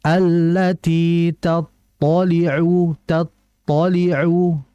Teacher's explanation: Ta itu bersifat tebal, yaitu isti'la. Dengan mengangkat pangkal lidah, maka diangkat.